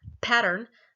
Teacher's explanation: there's an aspirated p it's at the beginning of the word